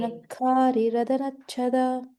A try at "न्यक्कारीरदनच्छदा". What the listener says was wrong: So your the, ba and ka are getting a little aspirated. Little. Have control on that.